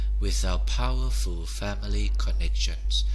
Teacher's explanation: You cut the T and then you start with the P.